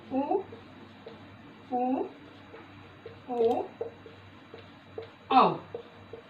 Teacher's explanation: जब हम इनका उच्चारण करते हैं तो हमारे जो होठों की आकृति है वो गोल हो जाती है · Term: वृत्ताकार